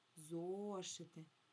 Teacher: Сильніше я вимовляю голосний о. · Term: наголос